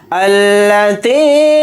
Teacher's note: تا کے ساتھ یا مدہ ہے، تا یا زیر تی کو تھوڑا کھینچ کر پڑھیں گے